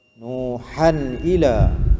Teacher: tanwin bertemu dengan hamzah kan, tanwin bertemu dengan hamzah, tak dengung lah, izhar halqi